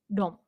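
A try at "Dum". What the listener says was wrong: Yeah. It's never It's always ooh. Doom.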